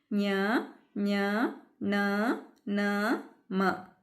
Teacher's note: ಅನುನಾಸಿಕ ಅಕ್ಷರಗಳು ಅಂದರೆ ಮೂಗಿನ ಸಹಾಯದಿಂದ ಉಚ್ಚರಿಸಲ್ಪಡ್ತಕ್ಕಂಥ ಅಕ್ಷರಗಳನ್ನೇ ಅನುನಾಸಿಕ ಅಕ್ಷರಗಳು ಅಂತ ಹೇಳ್ತೀವಿ.